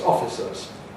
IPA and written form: ˈɒfɪsəz (officers)